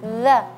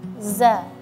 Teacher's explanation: Kalau di ayat ini za lidah kita di dalam. Kalau za lidah kita sedikit ee ee apa bertemu dengan ee gigi zari ujung gigi.